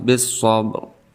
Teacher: ra-nya tidak dibaca dengan jelas tetapi sedikit saja karena di sini waqaf isyarah